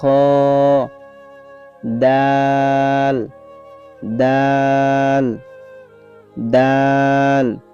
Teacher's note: জিহ্বার আগা সামনের উপরে দুই দাঁতের গোড়ার সঙ্গে লাগাইয়া